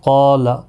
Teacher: قاف اور الف دونوں پر پڑھے جائیں گے، قاف حروف مستعلیہ میں سے ہے، پر پڑھا جائے گا۔